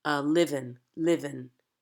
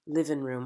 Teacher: We're going to drop NG endings.